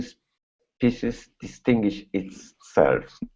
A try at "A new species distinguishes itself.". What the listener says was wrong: Okay, so this is going to be species distinguishes itself. So add those S's here on the end. A new species distinguishes itself.